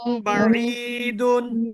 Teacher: মিম সাকিনের পরে বা আসলে তখন কি করতে হবে মিমকে গুন্না সহ পড়তে হবে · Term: মিম সাকিনের ইকফা